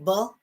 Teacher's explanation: is a bilabial sound because i touch my lips